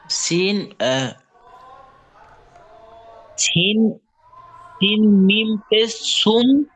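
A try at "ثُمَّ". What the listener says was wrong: ওটা সিন বলছেন আপনি? ও জি, ওটা আপনি সিন বলছেন, ওটা সিন না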